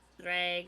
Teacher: I don't know why I rolled my R there, but I did.